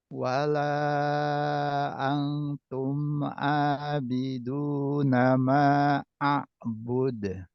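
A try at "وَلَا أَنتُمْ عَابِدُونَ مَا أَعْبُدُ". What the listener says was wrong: Ini kurang panjang. Ma a'bud.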